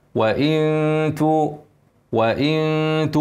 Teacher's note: نون ساكنه بعدها تاء اخفاء حقيقه